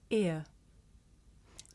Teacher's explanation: this is a diphthong a double vowel sound the shape the mouth makes changes from the beginning of the sound to the end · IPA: /ɪə/